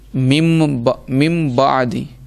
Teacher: نون ساکن یا تنوین کے بعد حرف با آ جائے، نون ساکن یا تنوین کے بعد اگر حرف با آ جائے تو اقلاب ہوگا۔ یعنی نون ساکن اور تنوین کو ہم میم سے بدل کر پڑھیں گے، میم سے بدل کے پڑھیں گے اور گننا بھی کریں گے